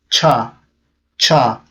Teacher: This is always hard. This is always strong, always aspirated. Cha, cha. So when you put your palm in front of your mouth, you will feel your breath on your hand, on your palm.